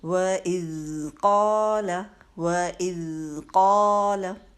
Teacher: قَالَ میں دیکھیے قاف کے ساتھ تو الف مد ہے تو 2 حرکت لمبا کیا، لام کے اوپر زبر ہے تو لمبی نہیں ہونی چاہیے زبر · پہلا لفظ ہے وَإِذْ، واو کے لیے ہونٹ گول کیجئے، اور ذال ساکن ہے تو اس میں بزنگ ساؤنڈ نہیں آنی چاہیے، سافٹلی پڑھیے، اور نہ ہی اس کو وَإِذْ کر کے قلقلہ ہم کر دیتے ہیں، اکثر ذہن میں نہیں رہتا اور ہم پڑھتے وَإِذْ قَالَ، وَإِذْ نہیں کرنا، اس کو قلقلے کی طرح نہیں ادا کرنا، بلکہ وَإِذْ قَالَ، وَإِذْ قَالَ۔